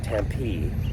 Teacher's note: And the accent is on the last syllable, I guess.